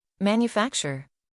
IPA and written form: ˌmæn.jəˈfæk.tʃər (Manufacture)